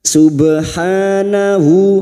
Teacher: ba sukun yang mati asli dengan kalimat Qalqalah sugro jangan lupa dipantulkan